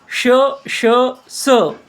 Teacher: वाटतं किंवा असं जाणवतं शष स यांना उष्मे घर्षक म्हणतात कारण यांचा उच्चार करताना हवा घासली जाते आणि उष्णता निर्माण होते